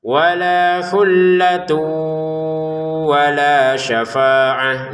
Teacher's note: Syafaatun dibaca syafaah karena berhenti. · tanwinnya bertemu wau dimasukkan dengan dengungan. Lamnya dua harakat.